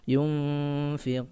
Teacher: Lalu terakhir ada mad arid lisukun, ya, mad arid lisukun, yaitu dia baru saja menjadi mad, ya, ketika ada huruf sukun yang diwaqafkan, ya, disebabkan waqaf di akhir kalimat, maka panjangnya 4 harokat, 4 ketukan, ya, 4-nya lepas